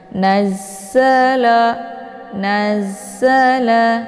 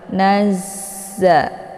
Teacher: Za ini sifatnya adalah shafir, jadi dia ada desis anginnya yang agak jelas.